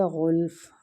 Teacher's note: غین بھی مستعلیہ حروف ہے، اس کو پر پڑھنا ہے